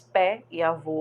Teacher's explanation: porque as vogais tônicas é e o são abertas